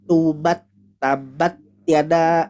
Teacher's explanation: hilangnya sifat hamas, hati-hati. Jadi bacanya benar-benar flat.